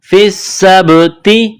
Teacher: ہے، سین پر تشدید ہے تو سین میں سختی کرنی ہے، سین میں سیٹی کی آواز پیدا کرنی ہے ، سین کو با کے ساتھ ملانا ہے، با ساکن ہے